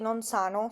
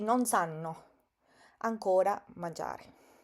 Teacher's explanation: Fíjense ustedes con la pronunciación, que yo no digo i bimbi non sanno, sino non sanno, porque es muy importante en italiano pronunciar la doble consonante de una manera correcta. Esta A que está acá va a sonar un poco más larga porque tiene doble N.